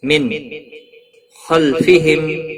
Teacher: نون ساکن کے بعد حروف حلقی کا خا آیا ہے. یہاں پر اظہار حلقی ہوگا. گنہ نہیں کرنا ہے. نون کو ظاہر کر کے پڑھیں گے.